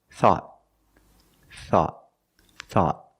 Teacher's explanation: At the end, the tongue goes up and makes a stop T. Not thought, but thought.